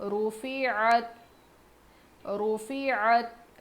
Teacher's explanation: عین کی آواز حلق سے، اور تا پر جزم ہے تو تا کو ہم پیچھے والے حرف سے ملا کر پڑھیں گے.